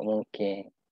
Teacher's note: Nga dengan kaf tu dia berlaku proses asimilasi, iaitu dia berlaku pada langit lembut, belakang lidah. Kaf belakang lidah, nga pun belakang lidah dalam bahasa Melayu. Jadi dia ngam, dia berasimilasi, senang sebut mungkin berbanding dengan mungkin.